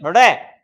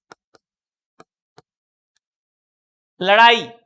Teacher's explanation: लेकिन इन दोनों में अंतर है, ये है उत्क्षिप्त व्यंजन, ये ऊपर की तरफ जिह्वा उठेगी, उठने के बाद बाहर की ओर फेंकी जाएगी, ड़ जिह्वा उठती है और बाहर की ओर फेंकी जाती है